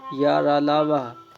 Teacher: इन ध्वनियों के उच्चारण में उच्चारण अवयव में कहीं भी पूर्ण स्पर्श नहीं होता है तथा सर्व सस वायु अनुरोध रहती है हिंदी वर्णमाला में या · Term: अंतस्थ व्यंजन